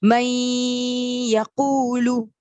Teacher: یا پہ نون کو ہم غنہ کر رہے ہیں اور یا سے ملا رہے ہیں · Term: ادغام